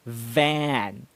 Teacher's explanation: notice that i bite my lip or i seem to be biting my lip every time i pronounce the v sound